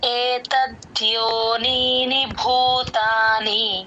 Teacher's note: first నీ కి దీర్ఘం తర్వాత నీ కి మామూలు ని గుడి అంతే